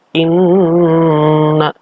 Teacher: bacaan Ghunnah artinya dibaca dengan dengung karena disini adalah Nun yang bertasydid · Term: gunnah